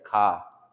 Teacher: we don't have R's, and so we just say ka, because it sounds like car.